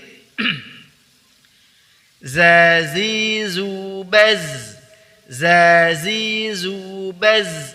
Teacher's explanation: Perhatikan baz dialirkan ya, ar-rakhawah.